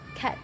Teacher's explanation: Nah, bunyi kah ini termasuk ke dalam bunyi voiceless atau tidak bergetar di mana pita suara tidak bergetar serta berletup sehingga masuk dalam nominasi letup dan fel di mana lidah lidah bagian dalam menyentuh langit-langit lunak di dalam dalam mulut.